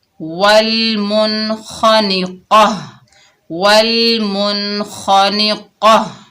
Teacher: وقف کی حالت میں یہ گول تا جو ہے یہ ہا بن جائے گی، ہا ساکنہ بن جائے گی